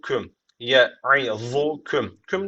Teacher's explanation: cezimli Mim var Sonra harekeli B gelmiş o zaman burada da ne var dudak ihfası dediğimiz tecvit var